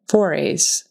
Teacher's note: The syllable stress is on that first syllable, forays into the unknown, forays, and a Z sound on the end.